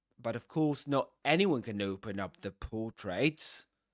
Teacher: You notice that anyone is accented here, and there's a full rise tone.